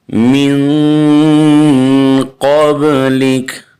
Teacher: کاف کو ساکن کریں گے، لفظ ہے قبلک